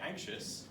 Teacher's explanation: when we say anxious, the I, O and the U is a schwa sound.